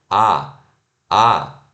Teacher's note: o A do português é o A que a gente está sorrindo, né? Que os nossos lábios estão esticados